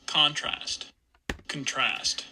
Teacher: we see this big jump in intensity for the first syllable of contrast the con part of it contrast uh and then intensity goes · So we have stress on the first syllable here.